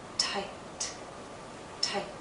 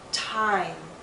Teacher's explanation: M is a voiced consonant, so the same sound now becomes longer. Because it's longer in the word time, you're going to see more movement in my mouth.